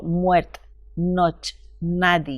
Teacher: la pérdida de vocales, especialmente la E al final de la palabra